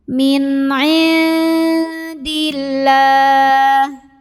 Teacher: Lam jalalah dibaca secara tarqiq karena huruf sebelumnya berbaris kasroh. Cara membacanya ditipiskan, pangkal lidah datar bunyinya lah, ringan.